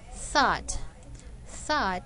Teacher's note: thought has voiceless th sound and not f sound